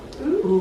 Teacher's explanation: It's the closed back rounded vowel.